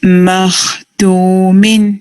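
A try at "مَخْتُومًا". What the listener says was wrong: اس پہ بھی خاص سکون پہ تھوڑا نسبتاً ٹائمنگ اور دے سکتے ہیں. مختومن.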